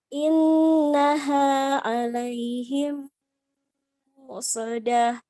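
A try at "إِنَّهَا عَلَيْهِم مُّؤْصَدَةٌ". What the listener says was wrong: Muqsadah, hamzahnya kurang kuat. Muqsadah.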